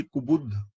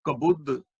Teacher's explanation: ਕੱਕੇ ਥੱਲੇ ਔਰ ਬੱਬੇ ਥੱਲੇ ਦੋਵਾਂ ਔਂਕੜਾਂ ਦੀ ਆਵਾਜ਼ ਆਉਣੀ ਚਾਹੀਦੀ। ਕੁਬੁੱਧ, ਇਹਨੂੰ ਕਬੁੱਧ ਨਹੀਂ ਪੜਨਾ।